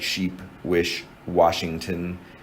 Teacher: so that's only one sound though you can't separate sh into s and huh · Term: esch